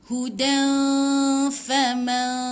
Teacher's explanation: Mana-mana hukum ikhfa, jangan sebut tepat pada nun, gantungkan lidah, lepas tu bersedia, bukan terus sebut fa, tapi bersedia nak sebut fa. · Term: ikhfa hakiki